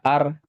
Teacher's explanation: نون ساکن پڑھا ہی نہیں جائے گا اس میں، یعنی نون کی آواز ہی نہیں آئے گی۔ لکھا جائے گا ان، لیکن پڑھا جائے گا ار۔ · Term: ادغام